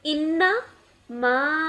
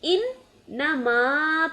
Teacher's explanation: مشدد حرف کو مضبوطی سے ادا کرنے کے لیے پہلے اس پر آواز ٹھہرے گی اور پھر اس کی حرکت پڑھیں گے۔ لہجے کو درست رکھنے کے لیے مشدد حرف کے پہلے حصے کو پچھلے حرف کے ساتھ اور دوسرے حصے کو بعد والے حرف کے ساتھ پڑھا جاتا ہے۔